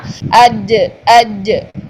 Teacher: जीम जो है ये इसमें शिद्दत पाई जाती है, इसलिए ज़ुबान का दरमियान पूरा ऊपर तालु के साथ टच होगा